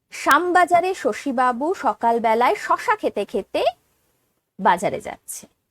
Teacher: বাংলার ক্ষেত্রে তালব্য স হোক, দন্ত স হোক, মূর্ধন্য স হোক, 3টেতেই স উচ্চারণ হয়